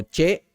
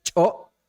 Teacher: nuestras palabras que vamos a emplear terminan con una vocal glotalizada